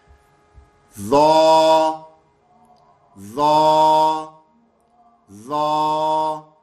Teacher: اس میں زبان کو موٹا بھی کر دینا ہے اور منہ کو گول کر دینا ہے تاکہ یہ حروف تفخیم بھی بن جائے، موٹے حرف والا بھی بن جائے.